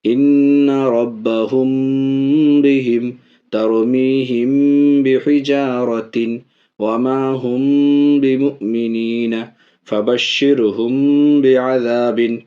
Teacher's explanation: میم ساکن کے بعد با آئے تو ناک میں آواز چھپا کے پڑھیں گے، اخفاء کے ساتھ غنہ بھی ہوگا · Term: اخفاء شفوی